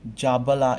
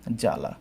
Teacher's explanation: জ্বালা এর বানানে ব থাকলেও আমরা উচ্চারণে কিন্তু জাবালা এরকম আমরা উচ্চারণ করি না, জয়ের সাথে ব উচ্চারণ করি না।